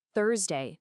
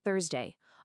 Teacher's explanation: the stress, the emphasis is always on the first syllable. It's the first part of the word that gets the punch.